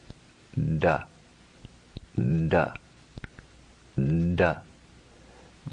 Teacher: The third letter is a soft variation of the first. If you take the hard letter, ta, and simply add resonance to it, we get the sound da, da, da.